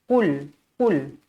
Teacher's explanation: Qul, pastikan huruf qaf tebal. Jangan baca berangin. Ini bukan huruf kaf.